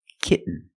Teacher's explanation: the syllable is not stressed the T makes a different sound we have to make a stop T and Link it to the N